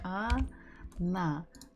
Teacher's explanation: So the word she, она, the stress falls on the last syllable. So the first letter O, is not stressed. So we must read it or pronounce it as A.